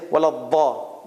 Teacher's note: And the Arabs like Saudi Arabia and Qatar and all these places, many of the Arabs, they will say waladha. There's no z sound. There's only d, d.